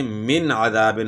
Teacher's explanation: یہاں نون ساکن کے بعد حروف حلقی میں سے عین آ گیا ہے تو یہاں بھی اظہار ہوگا، یعنی من عذاب ہوگا، من عذاب نہیں پڑھنا، من عذاب، یعنی نون ساکن میں دیر نہیں لگانی ورنہ پھر بیچ میں جو ہے غنے کی آواز آ جائے گی، من عذاب۔